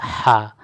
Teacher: تو ہا کا مخرج ہم سمجھ گئے، حلق کے درمیانی حصہ سے ہا ادا ہوتا ہے۔